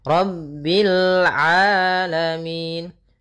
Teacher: rabbil rnya tebal ro tafkhim rabbil alamin hati-hati jangan sampai memantulkan lamnya dengan rabbil alamin karena